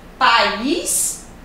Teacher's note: a sílaba tônica é o IS, é a última nesse caso